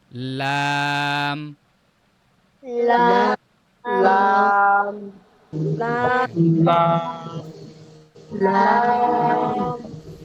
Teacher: লাম লাম মাখরাজ হচ্ছে মেইনলি উচ্চারণ যখন করছেন তখন লাম দেখবেন যে যে সিস্টেম বললো, অর্থাৎ জিহ্বার আগার কিনারা, এই যে জিহ্বার আগার কিনারাটা সামনের এই দাঁতের যে নরম অংশে ওটা লেগে উচ্চারণ হচ্ছে কিনা, তাহলে মেইনলি মোটামুটি উচ্চারণটা শুদ্ধ হবে, সহি হবে।